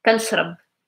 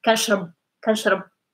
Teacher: And the R is not like really like you're not going to hear it strong because the B after it is voiced and is stronger.